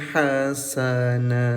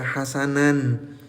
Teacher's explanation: Berhenti di sini jadi hasanah, jadi panjang dua harakat. Enggak dibaca hasanan ya